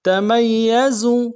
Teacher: اگلے یا کو نرم سے ادا کریں گے۔ زا کو موٹا کریں گے، زا میں جو سیٹی ہوگی وہ سیٹی نکلے گی۔